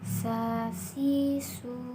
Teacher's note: diucapkan dengan menggunakan lidah terdekat hampir di atas dua gigi seri bagian bawah diiringi dengan mengalirnya suara dan nafas secara bersamaan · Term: huruf tsa